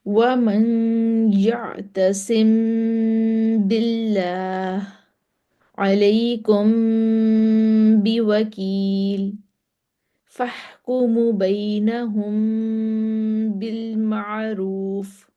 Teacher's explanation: ٹھیک ہے، میم ساکن کے بعد با آ گیا تو ہم نے اس پہ اخفا کر دیا. اخفا شفوی ہوگا، ہم نے ہونٹوں سے اخفا کرنا ہے. ٹھیک ہے، ناک سے آواز نکالنی ہے. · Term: اخفاء شفوی